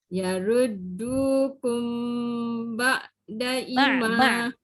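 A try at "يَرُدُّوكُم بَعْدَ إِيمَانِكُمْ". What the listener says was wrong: I panjangkan, ma panjangkan. Dengung pun tertinggal tu. Yaruddukum ba'da dah jangan panjang. Fokuskan pada yang pendek je. Dengung. I tak boleh pendek sebab hamzah dengan ya. Dia bila i dengan ma dah panjang, dah jangan panjang. Ba'da dah tak panjang. I dengan ma je panjang.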